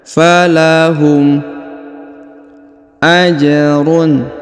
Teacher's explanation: huruf ja berharakat sukun maka kita pantulkan atau kita qalqalahkan